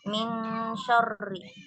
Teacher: ketika kita membaca min agak ditahan ya. Kurang lebih 2 sampai 3. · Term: ikhfa